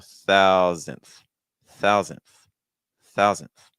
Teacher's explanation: the first syllable is your stress so that means that your second syllable is not stressed so that means our first syllable needs to be higher in